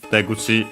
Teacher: the last syllable, the only syllable of the first part of the compound, being where the accent is, so high, low, low